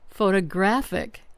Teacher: Stress on the third syllable.